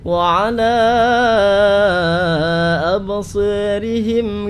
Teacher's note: Kalau kita dengarkan tadi ada bacaan wa ala absarihim, alanya dibaca dengan ukuran panjang 6 harokat. Memang mazhabnya riwayat Warsh harus 6 harokat.